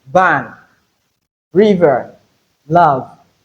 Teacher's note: letter V representing the voiced labiodental fricative sound